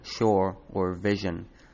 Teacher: English eventually turned sia and zia into sh and zh, as in shore or vision.